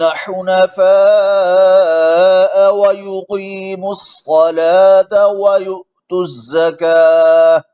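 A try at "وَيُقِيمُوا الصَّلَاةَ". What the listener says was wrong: तफ़हीम के मरातिब का ख्याल रखें। अब युकीमुस्सलात में काफ को इतना मोटा ना करे, युकी युकी युकी, ये तरीका ठीक नहीं है।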